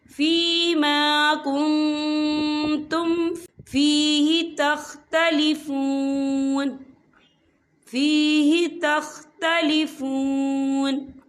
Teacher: یہ دیکھیں فیما کنتم، یہاں نون ساکن ہے، نون ساکن کے بعد جو ہے تا آ رہا ہے، اور تا جو ہے اقفا کا ورڈ ہے، تو ہم یہاں اقفا کریں گے، نون ساکن کی آواز کو ناک میں چھپائیں گے